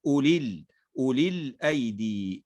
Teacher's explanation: ننطق فقط بلام مكسورة